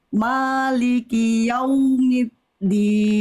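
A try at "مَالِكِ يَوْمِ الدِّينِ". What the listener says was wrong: Oke, Bunda, mim huruf tipis, huruf tebal. Oke, tipis. Jadi jangan mo, tapi ma, ya. Maliki yaumiddin.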